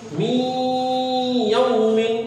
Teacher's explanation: نون ساکن کے بعد یہاں پہ یا ہے یہاں آواز ناک میں جائے گی ادغام ہوگا. من یوم ہجے کیسے کریں گے میم یا زیر میم یہاں نون نہیں پڑھیں گے نون کٹ ہو جائے گا.